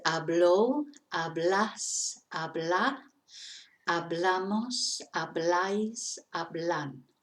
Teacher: It's spelt with a H, but we don't pronounce the H.